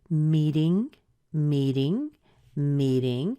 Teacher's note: Our stress is on the me, and the ding is unstressed, but you're hearing the rise. So we're already starting to go up right here.